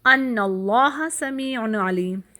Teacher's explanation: اس میں اب کیا آ رہا ہے، اللام من لفظ الجلالہ، یعنی اللہ کے نام میں جو پہلا لام ہے اس کو موٹا کرنا